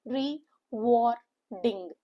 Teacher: a three syllable word with a stress on the second syllable